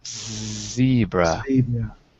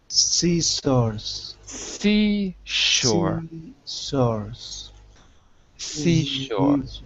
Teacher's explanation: the difference is you're using your vocal cords in Z and you're using nothing in s